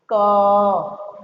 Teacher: अब आप उच्चारण करके देखिए क, आपको अनुभव होगा कि हमारे उच्चारण में आखिरी में अ का उच्चारण हो रहा है क, तो ये क पूरा अ के साथ हो जाता है।